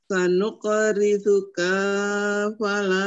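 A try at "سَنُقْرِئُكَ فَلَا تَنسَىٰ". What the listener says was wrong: sanuqri'uka kanya pendek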